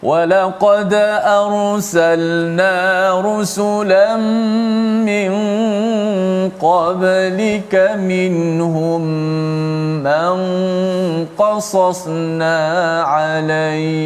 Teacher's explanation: nun itu disembunyikan makhrajnya, maknanya hujung lidah tu tak kena langit masa mati. Tidak kena langit, disembunyikan pada mana, di sisi huruf ikhfa, itulah huruf qaf di sini.